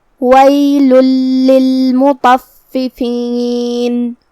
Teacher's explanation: کلمت ویل کے آخری میں یہاں لام پہ تنوین پیش ہے. تنوین کی اصلیت اور اس کی ادائیگی نون ساکن ہوتی ہے. پھر حرف اللام آتا ہے کلمت للمطففین میں. لام حروف الادغام بغیر غنہ میں سے ہے.